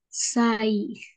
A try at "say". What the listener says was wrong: Y no se pronuncia sai. Recordemos, la pronunciación de la A no es como en el español.